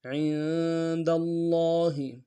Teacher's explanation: لفظ اللہ کے لام کے اوپر تشدید زور دیں گے، لام کے اوپر کھڑا زبر ہے، 1 مقدار میں کھینچیں گے